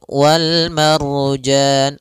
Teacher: ada Ro sebelumnya fathah maka dia ro tebal